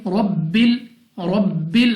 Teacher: Next रॉ पर जबर, तो रॉ को पुर पढ़ेंगे यानी मुंह और आवाज को खोल कर। बा हमारे पास कलकला मुशद्दद, तो खूब जमाव के साथ अदा करेंगे